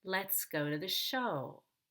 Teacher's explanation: Then I have to go up and down on that one syllable. So I'll need to divide the syllable into two parts and really stretch out that vowel with a high pitch and a low pitch.